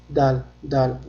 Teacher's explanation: dal harfini talaffuz qilishda tilimizni uchi tepa tishimizning tubiga tegadi. Ya'ni dal deb talaffuz qilinadi.